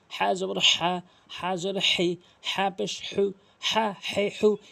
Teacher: হলকের মাঝখান থেকে উচ্চারণ করবেন